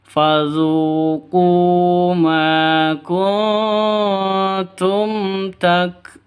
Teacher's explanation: Zun panjang boleh 2, boleh 4, boleh 6 ketukan. Kenapa? Karena mad arid li sukun.